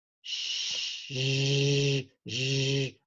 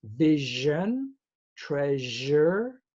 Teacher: Now, this one is zh. It's the same as sh, shh, but you put voice.